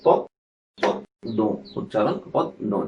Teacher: পদ্ম দ্বিত্ব হয়েছে এবং সামান্য নাসিক্য হয়েছে